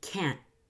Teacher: NT at the end of a phrase will have a held T.